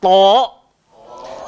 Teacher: Hujung lidah, langgar belakang gigi, atas. Dan sifat dia kena tebal, sebab tu nama dia isti'la. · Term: huruf ta